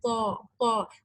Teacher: الف تو موٹا ہونا تھا, طا کے بعد الف ہمیشہ ہیوی پڑھا جاتا ہے. طا, ہم اس کو طا پتلا کر کے الف نہیں پڑھیں گے, ٹھیک ہے.